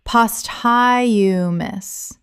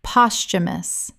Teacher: Three syllables with the th making a ch sound in natural speech. The h is silent.